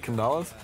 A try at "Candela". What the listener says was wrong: Well, it's not an A after the D, right? It's an E. It's Candela.